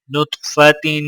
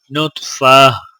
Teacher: تا کے نیچے دو زیر ہیں تو لہٰذا غنہ کیا جائے گا، اور وقف کرنے کی حالت میں تا کی جگہ ہا پڑھا جائے گا